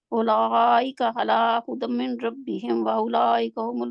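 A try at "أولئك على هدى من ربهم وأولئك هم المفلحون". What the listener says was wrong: مدمر، آپ کا ادغام وداؤٹ گننا ٹھیک نہیں ہے، مدمر ربہم، اولئک علی ھدی من ربہم،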